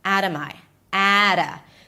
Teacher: So you actually drop your jaw for the a sound. The t becomes a flap t.